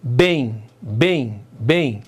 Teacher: O M aqui está nasalando o E e está sendo semivogal.